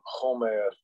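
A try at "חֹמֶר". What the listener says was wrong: So again, that's that modern Hebrew pronunciation. But really, this word is Kamar. Yeah, Kamar. It's like a throat K, basically. Like almost like you're hawking up spit. Yeah, it's a hawk, like Hamar.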